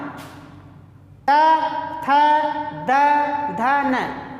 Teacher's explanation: जो हमारी जिह्वा है वह किसको स्पर्श कर रही है? दांत को, दांत को छू रही है।